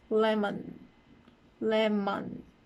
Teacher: as for the m its place of articulation would be bilabial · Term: m sound